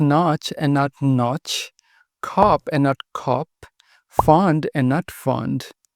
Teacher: Americans pronounce the word notch very differently from the British uh in American English this vowel is more open